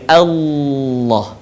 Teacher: Saya ingin mengingatkan, ketika kita melafalkan huruf lam pada lafzul jalalah atau lafaz Allah, maka huruf lam harus terdengar suaranya menebal dengan cara menutupkan bagian lisan ke langit-langit.